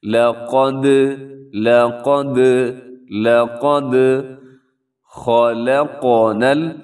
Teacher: لَقَدْ خَلَقْنَا الْإِنسَانَ فِي أَحْسَنِ تَقْوِيمٍ، بہت ہی خوبصورت آیت ہے، اور اس آیت کا پہلا لفظ ہے لقد، لام بھی باریک ہے لیکن قوف موٹا پڑھنا ہے آپ نے، اور خوب موٹا پڑھنا ہے۔ آگے دال ساکن ہے تو اپنے دال کو ہلانا ہے، کیونکہ دال حروف قلقلہ میں سے ہے